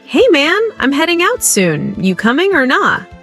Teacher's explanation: Notice the dropped G in heading and coming, and the use of casual phrases.